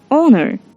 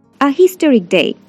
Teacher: The H is silent here. We use an because the honor has a vowel sound honor, because the H is not pronounced.